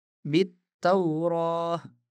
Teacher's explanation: kami mengabaikan hamzah wasal dan lam dan membaca bit taurah.